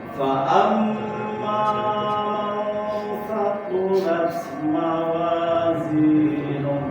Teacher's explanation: Nah, di gunah mim syaddadah masih kurang setengah harokat ya.